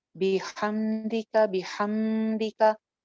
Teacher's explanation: मीम की आवाज को नहीं चलाएंगे